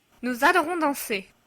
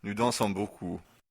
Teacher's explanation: the silent S is pronounced as a Z and links the pronoun to the verb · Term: liaison